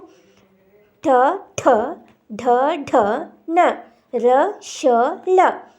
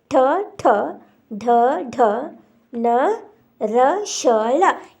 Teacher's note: ಮೂರ್ಧನ ಸಹಾಯದಿಂದ ಉಚ್ಚಾರಣೆ ಆಗತಕಂತ ಅಕ್ಷರಗಳಾಗಿವೆ